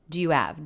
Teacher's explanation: So it was do you have? It's almost like we're making it just one syllable, connecting the D right onto the word you.